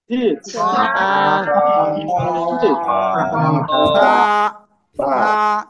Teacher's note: জিহ্বার আগা উপরে দুই দাঁতের আগায় লাগিয়ে নরম করে একালিপ টেনে পড়তে হবে